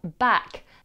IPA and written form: bæk (back)